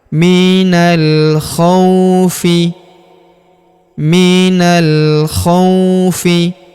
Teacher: huruf k kita ayun sekali karena wau sukun di depannya. Minal khaufi minal khaufi wal huruf wa langsung sambung masuk lompat ke huruf lam yang berharakat sukun langsung masuk ke sini.